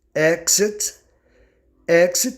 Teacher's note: Exit tem duas pronúncias tanto você pode pronunciar KS como gz